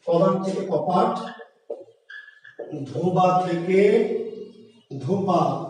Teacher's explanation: ব যদি প হয় মানে ঘোষ থেকে অঘোষ হয়, তাহলে তার নাম অঘোষী